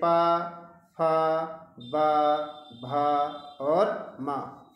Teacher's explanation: इस तरह से याद रखिए, आप पा का उच्चारण करेंगे जो हमारी अंदर से आने वाली ध्वनि है वो ओंठ जब बंद होंगे फिर खुलेंगे इस तरह से ध्वनि बाहर जाएगी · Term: ओष्ठ